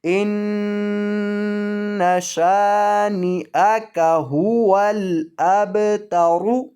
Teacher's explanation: ہاں جب را کے نیچے زیر ہو تو ایسی صورت میں را کو موٹا نہیں باریک کیا جاتا ہے، تو اب یہاں را کے اوپر پیش ہے، را کو موٹا کیا جائے گا۔ إِنَّ شَانِئَكَ هُوَ الْأَبْتَرُ، وقف کریں گے تو را کو ساکن کر کے پڑھیں گے، وقفاً ان شانئک هو الابتر۔